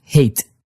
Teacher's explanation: in Dutch you're starting the vowel earlier so there's a moment where you're articulating an h and a vowel at the exact same time practically you're just making an EXT extra breathy sounding vowel ha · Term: Dutch H